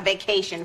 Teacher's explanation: in this case the accent is in the second syllable